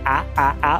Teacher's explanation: O A do português é mais aberto, mais para baixo. A A. O do inglês é um pouco mais fechado.